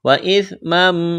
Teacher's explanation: سا کو نرم کرنا ہے، تنوین کے بعد میم ہے، ادغام کریں گے